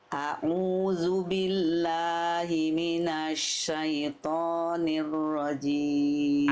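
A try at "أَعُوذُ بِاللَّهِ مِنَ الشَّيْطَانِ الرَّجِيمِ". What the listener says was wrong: Ainnya tegaskan lagi sedikit. Mundai minta au dari tengah tenggorokan ngeden lagi sedikit.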